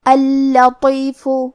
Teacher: کلمت اللطیف میں حرف اللام پہ تشدید ہے لہذا ہمیں 2 حرف کے برابر لام کو پڑھنا ہے. یہاں ہمیں حرف اللام کو پتلی آواز میں پڑھنا ہے لیکن اس کے بعد حرف الطو ہے اور طو حروف التفخیم میں سے ہے تو ہم یہ حرف کو بھاری آواز میں اور منہ پھلا کے پڑھیں گے.